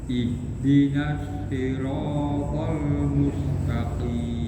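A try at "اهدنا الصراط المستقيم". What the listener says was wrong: Tapi sinnya yang mustaqim, jangan kayak malah ikut shot juga. Nah, terlalu semangat shot, nah, semuanya shot ya.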